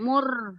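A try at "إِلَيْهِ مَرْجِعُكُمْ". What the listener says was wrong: Ilaihi mar, bukan mur. Ilaihi mar.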